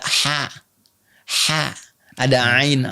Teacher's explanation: ha dengan ain makhrajnya sama